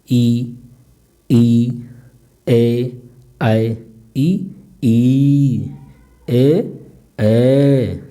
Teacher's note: अग्रस्वर में मतलब जो होता है जीभ का अगला भाग उठता है